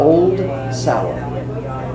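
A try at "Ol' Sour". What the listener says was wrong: well, they don't pronounce the D. no apostrophe.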